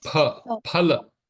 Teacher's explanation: Pa. Not fa. Pa. Just the lips touching.